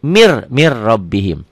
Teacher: Tulisannya min rabbihim, dibacanya mir rabbihim. Ini idgham bilagunah, idgham tanpa dengung, tanpa ditahan.